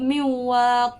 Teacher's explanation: Nun tu tak bunyi sangat tapi terus masuk ke dalam huruf waw. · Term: idgham ma'al ghunnah